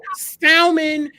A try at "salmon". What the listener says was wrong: Salmon, you don't pronounce the L in salmon. salmon.